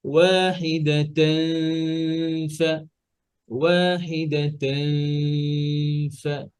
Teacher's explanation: তাহলে ফায়ের মাখরাজ কোথায় উপরের দাঁত নিচের ঠোঁট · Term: ইকফা